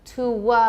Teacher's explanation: if we want to link it, we say to wa because of the u sound